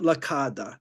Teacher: in Sicilian that Double L is pronounced like a d a double D